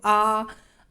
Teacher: जिन स्वरों के उच्चारण में मुख द्वार पूरा खुलता है उन्हें विमृत कहते हैं। जैसे आ बोलने में मुंह पूरा खुल रहा है ना, तो वो विमृत।